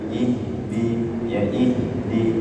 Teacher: Adapun sifatnya, pertama dia hamas, ya, hamas dan rakha, mengalir baik suara maupun nafasnya, ya, baik suara maupun nafasnya sama-sama mengalir, ya, jadi tidak ada yang tertahan, ya. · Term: ha sukun